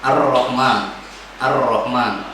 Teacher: Karena disebut alif lam samsiah karena huruf lamnya tidak kita baca sehingga masuk ke dalam huruf ro